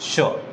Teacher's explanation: षटकोण वाला श, जिसको अपन कहते हैं, उसको अपन बोलते हैं मूर्धन्य श। मूर्धा से बोला जाता है श